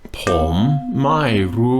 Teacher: ผ ม rising tone, ไ ม ่ falling tone, and ร ู ้ high tone. Now that ร ู ้, you hear me just barely roll that R.